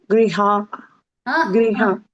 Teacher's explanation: హా అని మళ్ళీ అనునాసికం పెట్టొద్దు. గ్రీహ, గ్రీహ, హా రావద్దు అక్కడ.